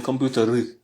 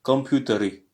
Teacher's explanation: Le R se roule et le I c'est guttural, c'est au fond de la gorge